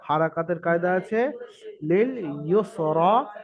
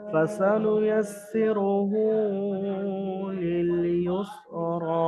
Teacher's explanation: ইউসরা, র খারা জবর র, খারা জবর আলিফ মাদ্দার সমতুল্য, সুতরাং খারা জবরকে আলিফ মাদ্দার মতো এক আলিফ পরিমাণ টান দিয়ে পড়তে হবে